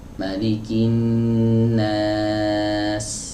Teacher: Huruf sin keluarnya dari ujung lidah, bertemu dengan bagian bawah dinding dalam gigi seri bawah. Ya, ini gigi seri bawah, dinding dalamnya, itu dinding dalamnya itu ada bagian bawahnya.